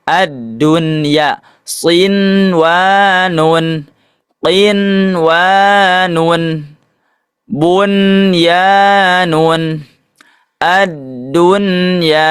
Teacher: Pengecualian bukan termasuk idgham bigunah apabila nun sukun bertemu wau dan ya dalam satu kata yang hukumnya adalah izhar mutlak